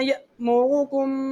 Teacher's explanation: اگر اس کے اوپر کوئی حرکت آ جائے، تنوین آ جائے، یہ ساکن جزم آ جائے، اس صورت میں یہ حمزہ پڑھا جاتا ہے، ٹھیک ہے. یہ حمزہ ساکن کو ہمیشہ جھٹکا دے کے پڑھا جاتا ہے